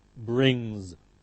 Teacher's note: the nasal n, m, ng are all nasals. They're always followed by voiced z, brings.